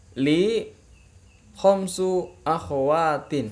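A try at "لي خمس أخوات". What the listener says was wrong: Iya, bagus.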